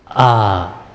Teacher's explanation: Alif adalah huruf hamzah. Ia berasal dari pangkal A, dari pangkal tenggorokan, menghembus A. Berarti ia adalah merupakan makhraj yang pertama, paling awal di sini.